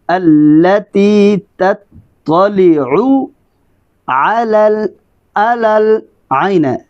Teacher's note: حمزہ، عین گلے کے درمیان سے